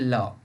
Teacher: जिनके उच्चारण में जिह्वा का अगला भाग मसूड़े को छूता है और वायु पार्श्व आसपास से निकल जाता है, वे पार्श्विक है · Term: पार्श्विक वर्ण